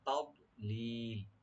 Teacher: তা ওপেন রাখবেন, জোরটাকে রাইট দিবেন, কিন্তু এখানে কলকলা হবে না